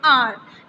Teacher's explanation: the correct pronunciation of this word HOUR is R. H is completely silent here. So if you see, if you pronounce this word, if you hear this pronunciation carefully, the pronunciation is R, means O, the sound of O is coming, which is a vowel.